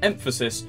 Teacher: the word you're saying in English we have stress which means you put emphasis on one part of the word such as emphasis you put it on the first syllable